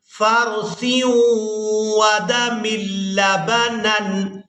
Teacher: سا کو ادا کرتے ہوئے ہم نے سیٹی کی مثل آواز پیدا نہیں ہونے دینی